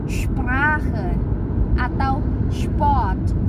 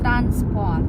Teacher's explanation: S-nya dibacanya agak sh ketika ketemu P